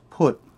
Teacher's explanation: the word for speak is put which is a falling tone